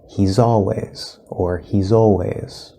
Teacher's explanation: The Z in he's will connect